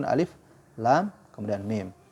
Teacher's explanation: Alif itu 1 harokat, Lam itu 6 harokat, Mim itu 6 harokat.